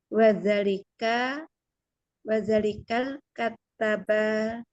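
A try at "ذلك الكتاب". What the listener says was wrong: Zalikal kitab, bedain ya Bu ya, katab dengan kitab. Ini kitab ya Bu.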